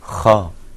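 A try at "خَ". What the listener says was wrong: No, I want to see you open your mouth a little bit more. Kha.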